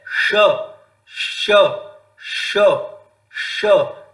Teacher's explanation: ट ठ ड ढ ण र और श, इन सब का उच्चारण स्थान मूर्धा है